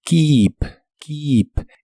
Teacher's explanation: la doble e de este verbo se pronuncia como una I larga o doble